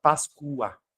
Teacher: Mas em fonética, este o, essa grafia do O, ao analisarmos naturalmente a palavra páscoa como sendo uma palavra parox terminado de tongo, dois tons, o som desse o é u